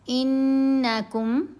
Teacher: انکم، نون کے اوپر غنہ کیا لیکن نون کو لمبا نہیں کرنا، صرف حمزہ کو نون سے ملاتے ہوئے غنہ ہوگا۔